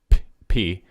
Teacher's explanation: time where you're holding up air like when i say p my mouth's like building up air and then releasing it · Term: plosive